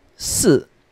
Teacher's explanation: Number 3 is read as San. Number 4 is in the fourth tone.